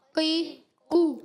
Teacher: حرکتیں کھینچیں گے نہیں مگر قاف کو موٹا رکھنا ہے آپ نے